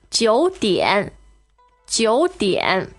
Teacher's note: 9, third tone, and 点, also a third tone.